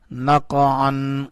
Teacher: کاف کو اٹھائیں گے قاف کے اوپر کلکلا کریں گے